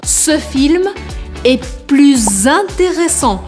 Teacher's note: Então vocês viram que eu faço a liaison grudando o plus com intéressant, fazendo o som de Z.